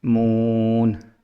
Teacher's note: मून में मी एम, जो जैसे मैंने पीछे मीम पढ़ाया था उसमें यहाँ होंठों से निकल रहा है मून मून, यानी कि होंठ पहले जो मिलाने हैं, फिर होंठों को गोल करके एक आवाज़ निकालनी है